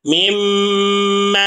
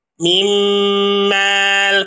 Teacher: Perhatikan di sini ada nun mati bertemu dengan huruf mim. Maka nun matinya dileburkan kepada huruf mim sehingga mimnya ini menjadi bertasydid. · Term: idgham bighunah